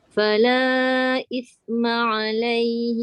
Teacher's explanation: Hujung lidah mesti keluarkan, nanti dia jadi sin.